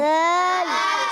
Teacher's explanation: تو ذال میں سیٹی بالکل بھی نہیں نکالتے، کیونکہ یہ ذال ان حروف میں سے ہے جن میں سیٹی نہیں نکالی جاتی.